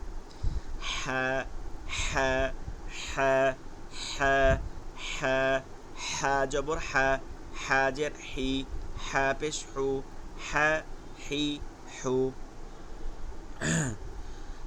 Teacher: ফিসফিস আওয়াজে গলার মধ্যে থেকে বাতাস চলে আসবে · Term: লম্বা হা